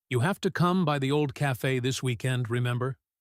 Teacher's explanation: The first part of that sentence, you have to come by the old cafe this weekend, has a fairly normal falling pattern because it's a statement almost like a gentle order wrapped in friendliness. But remember at the end rises sharply because it's a real question, a genuine check to see if she still remembers that place.